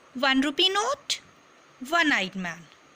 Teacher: the word one begins with the vowel O, but one is pronounced with the W sound, which is also a consonant sound. So, we can't say it as an 1 rupee note or an one-eyed man.